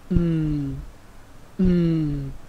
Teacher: it's produced with your nose and your mouth is closed and then you release the sound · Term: nasal sounds